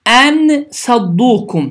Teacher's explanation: Bu zaman ixə qaydası baş verir. İxfə qaydası zamanı dilin ucu yuxarı kəsici dişlərin damağına yaxınlaşaraq tələffüz olunur və iki saniyə miqdarında dayanaraq, iki saniyə miqdarında dayanaraq səs burundan çıxır.